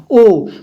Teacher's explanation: ओ को बोलने में कंठ से भी वायु निकलती है और आपको ओठ का भी उसका में प्रयोग करना पड़ता है।